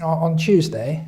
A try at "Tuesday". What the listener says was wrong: On Tuesday. It sounds like you're choosing a day. We would say Tuesday. Tuesday. Some people might say Tuesday too.